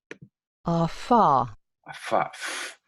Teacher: Aparece esta fricativa, bilabial. Afá. Ese es cuando soplamos las velas del cumpleaños.